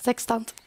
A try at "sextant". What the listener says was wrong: Hur betonade du det där egentligen? Du sa sextant, sa du. Sextant, tror jag man uttalar det. Det var väldigt rolig betoning. Sextant, det är helt andra grejer.